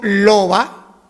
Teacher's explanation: si yo digo loba, ahí no juntamos los dos labios, es una B fricativa